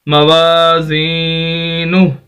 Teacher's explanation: ہا کی آواز آئے گی لیکن الٹا پیش نہیں پڑا جائے گا کیونکہ ہا ساکن ہو گیا ، جس طرح یہ یا ساکن اس طرح ہا بھی ساکن